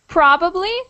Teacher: there's a definite emphasis on the first syllable in probably